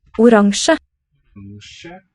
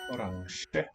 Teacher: I hear a velar nasal and a single palatal fricative.